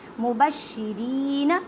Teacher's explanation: فبعث اللہ النبیین اللہ کے لفظ کو پر پڑھیں کیونکہ اللہ کے لفظ سے پہلے زبر ہے، نون مشدد غنہ کریں. مبشرین را کو باریک پڑھیں اور را کو ایک الف کی مقدار میں کھینچ کر پڑھیں